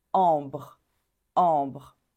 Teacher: on a une voyelle nasale en et ensuite on ajoute deux sons B r